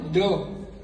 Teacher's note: બે વગાડી તું જા જ્યારે તમે ડબ છે ને ડ ત્યારે તમારા જીભ નો જે અગ્ર ભાગ છે ને એ છેક તાળવે જાય છે